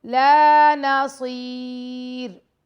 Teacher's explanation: لام کے ساتھ الف ہے، لام کو ہم 2 سیکنڈ کا ٹائم دیں گے